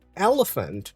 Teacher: the second E is a schwa, and the A is also a schwa. The first E is the E.